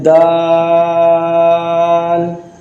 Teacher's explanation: اس سے آگے آتا ہے دال، یہ لسانی مخارج کا جو مخرج ہے وہ ہے حروف نطعیہ میں سے، یہ زبان کی نوک اور اوپر کے دانتوں کی جڑ جب آپس میں ٹکرائیں گے، آپس میں ملیں گے، اس وقت یہ دال ادا ہوگا